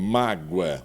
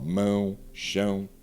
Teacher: O oral ele é aberto, o nasal ele tem essa nasalização.